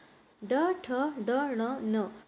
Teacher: यह मूर्धन्य वर्ण है जो जीभ के ऊपर से घुमाकर बोले जाते हैं।